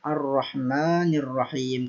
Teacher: Kemudian di sini hamzatul wasl juga sama karena diwasolkan atau disambungkan dengan ayat atau kalimat sebelumnya Ar-Rahmanir Rahim. Hamzatul wasl ini digugurkan atau tidak dibaca. Langsung ke huruf ra, Ar-Rahmanir Rahim, karena termasuk lam ta'rif asy-syamsiyah.